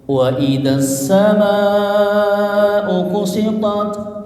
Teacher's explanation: Mad ya bertemu dengan hamzah dalam satu kalimat as-sama ya. Jadi as-sama itu pakai hamzah ya. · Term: mad wajib muttasil